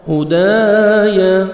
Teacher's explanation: الف مدہ 1 سیکنڈ آپ نے دال کو کھینچنا ہے